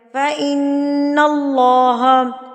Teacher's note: اللہ سے پہلے زبر آ گیا تو اس کو پر کر کے پڑھیں گے